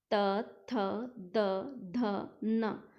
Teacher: त वर्ग में जो जीभ है वो दांतों के ऊपर लगती है, दांतों को टच करती है। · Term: दंत्य